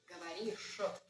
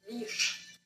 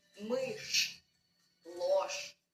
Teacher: The soft sign at the end of a word doesn't make sh soft. Remember, in Russian, there are 3 consonants that never turn soft, no matter what follows them. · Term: hard sh